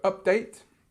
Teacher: the part of update that you have strength on is the date part, second part